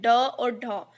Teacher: जिनके उच्चारण में जीभ पहले ऊपर उठकर तालु के अग्र भाग का स्पर्श करे फिर झटके के साथ नीचे आए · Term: उत्क्षिप्त व्यंजन